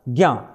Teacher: बना है ज हल और ञ से मिलकर के ज्ञ बनाया उसका उच्चारण होता है ग और य का उच्चारण